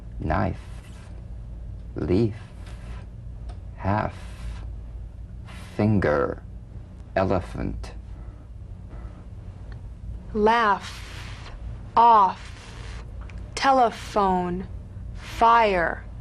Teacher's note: dental upper teeth to lower lip just like the V now feel the V then turn off the voice and continue · the f is a cognate to the V the unvoiced fricative la VA dental upper teeth to lower lip just like the